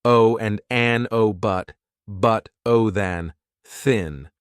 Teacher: By and large, it's the schwa sound that we are using in the weak form. Not always but usually.